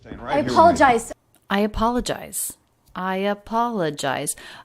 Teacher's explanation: the middle syllable the third syllable is the most stressed i apologize but the intonation is smooth we don't have skips